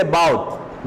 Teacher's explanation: No explosion at the end of the word.